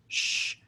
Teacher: pink noise back of the mouth sh sound as opposed to a higher pitched white noise sh sound